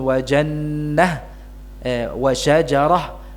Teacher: H tnit atau tak marbutah ya Ha T atau Ta marbwiun tanwinnya dihilangkan dan berhentinya dengan ha sukun